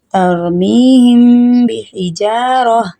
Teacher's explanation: میم ساکین ہے، اگلا ورڈ با ہے، اس لیے یہاں غنہ ہوگا